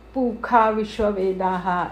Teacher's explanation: कई जगह पर श को ख बोलते हैं पुखा विश्ववेदा ऐसे जो उच्चारण करते हैं वो कब करना है उसके नियम भी ये शिक्षाओं में दिए गए हैं।